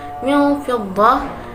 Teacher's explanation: Lalu lafaz min fiddah itu ada bacaan ikhfa hakiki sebab nun sukun bertemu dengan huruf fa